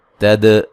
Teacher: دال پہ قلقلہ کریں گے